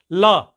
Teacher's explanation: र ध्वनि निकलती है तो र मूर्धा से हो गई ल ल जीभ को आगे ले जाते हैं दांत के पास · ल जीभ को आगे ले जाते हैं दांत के पास, तो दंत से ये निकलती है